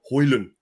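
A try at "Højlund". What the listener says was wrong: Hojlund? Take the D off. When he was doing the pronunciation, I don't know if you saw, he sort of went Hojlund. Hojlund. I think just take the D off the end.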